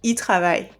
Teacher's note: You don't hear the L sound.